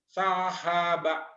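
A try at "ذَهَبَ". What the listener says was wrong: zai zal zahaba bukan sahabat zahaba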